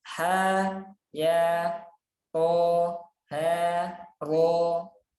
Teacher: ha 2 harokat, ya 2 harokat, to 2 harokat, ha 2 harokat, ro 2 harokat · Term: mat tabi harfi